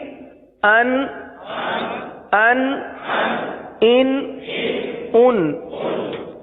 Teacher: نہیں ہوگا، کیونکہ یہ صرف نون ساکن ہے. تو نون ساکن کی جتنی آواز نکلتی ہے اتنی آواز ناک میں جائے گی اور نون ساکن کی آواز نکلے گی، گنہ نہیں ہوگا